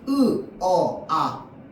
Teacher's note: 혀가 턱을 끌고 내려갈 거기 때문에. 그래서 고모음에서 저모음으로 갈수록 입이 더 많이 벌어집니다. · 으는 고모음이고요. 어는 중모음이고 아는 저모음이거든요. 혀의 위치잖아요. 혀의 위치.